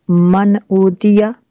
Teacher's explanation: मन, मन ऊतिया, मन ऊतिया, नून साकिन है। नून साकिन के बाद हमज़ा हुरूफ़ हलक़िया में से है, तो यहाँ पे गुन्ना नहीं कर सकते।